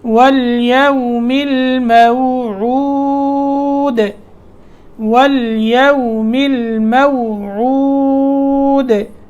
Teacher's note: عین کی آواز درست ہو اور آخر میں دال پہ وقف کیا ہے، دال کے نیچے زیر ہے، وقف کرنے کی صورت میں ساکن ہوئی اور سکون کی حالت میں اس میں قلقلہ پیدا ہوا۔